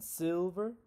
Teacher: Is a front middle vowel. What this means is that when I say my tongue is in the front and middle. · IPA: ɪ